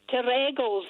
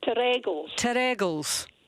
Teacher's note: The emphasis on the second syllable